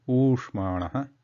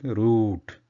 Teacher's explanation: The double the duration of oo, which is the same technique, throat tense, tongue relaxed, the lips form short circle, small circle, but duration is double that of the short u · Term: elongated oo sound